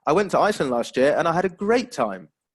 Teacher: it's showing excitement isn't it so we'd expect to have that rising intonation